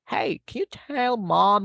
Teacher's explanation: we need to raise the intonation at the end